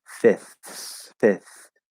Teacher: it's a light th and then you go to the s